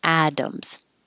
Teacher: And atoms, the T sounds like a D.